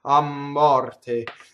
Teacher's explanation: So the M is going to double because of the strong monosyllable a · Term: phrasal doubling